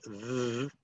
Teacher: to make the first sound, you have to put your tongue between your teeth, and you have to use your vocal cords. You have to use your voice. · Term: voiced sound